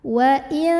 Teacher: cara membunyikan nun sukunnya ini adalah samar-samar menuju huruf ta. Jadi artinya nunnya tidak dibaca jelas wa'in, melainkan kita siap-siap menuju huruf ta.